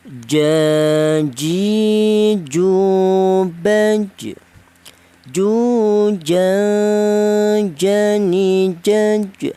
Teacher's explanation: Huruf jim ini keluarnya huruf berasal dari jim ya, berasal dari tengah lidah